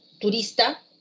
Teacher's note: Una palabra como turista lleva la fuerza de voz en la penúltima sílaba.